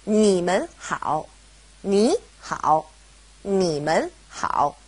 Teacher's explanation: because we have mun separating ni and hao, they both go back to being third tone